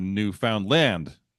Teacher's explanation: with emphasis on the last syllable